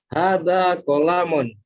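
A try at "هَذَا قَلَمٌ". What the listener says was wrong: Panjang pendeknya ini, kolamun hati-hati ini. Ulang lagi.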